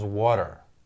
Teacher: exactly what happens to Americans when they pronounce t in the word water. They flap it and it becomes water.